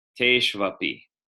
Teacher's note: V after a consonant in Sanskrit sounds more like a W. It's one of the only Sanskrit letters to change its sound based on environment.